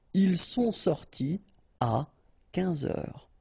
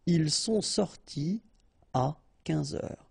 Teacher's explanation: You don't make a liaison after your participe passé. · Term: no liaison